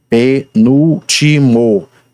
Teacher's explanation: palavra constituída de 4 sílabas, sendo que a sílaba mais estressada é a antepenúltima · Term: proparoxítona